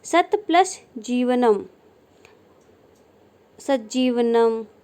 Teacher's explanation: त के बाद ज आने पर त का ज में परिवर्तन हो जाना। त के बाद ज आए तो ज की जगह त का ज में परिवर्तन हो जाएगा।